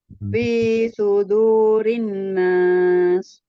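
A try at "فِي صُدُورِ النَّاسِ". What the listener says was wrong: Rinnas. Ya, gunnahnya itu disempurnakan dulu, Mi. Ya, tasdid itu gunnahnya paling tinggi ya.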